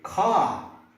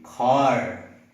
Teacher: in British, R is silent, and in American, you have to stress about the R.